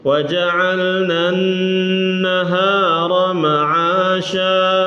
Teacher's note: Gunnah tapi enggak dipanjangin.